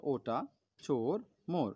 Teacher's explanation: আর জিভটা ও যখন বলি, জিভটা পেছনের দিকে উঁচু হয়। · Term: ও স্বরধ্বনি